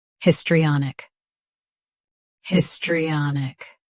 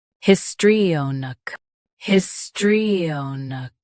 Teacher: US uses AA. UK uses O. Same histri and nook.